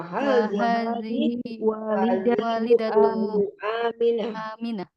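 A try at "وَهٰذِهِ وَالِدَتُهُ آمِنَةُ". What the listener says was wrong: Walidatuhu, ya, tuhu gitu. Ada hu-nya. Sekali lagi.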